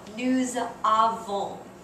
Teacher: You pronounce that S in nous like a Z sound because a vowel follows it.